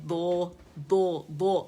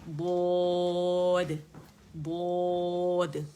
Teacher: میں نے دو جب کیا تو میں نے دال کے مخرج پہ کیا اور زبان کی جڑ اٹھائی، اور میں نے جو زبان کے جو کنارے ہیں وہ نہیں لگائے داڑوں پہ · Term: موٹا دال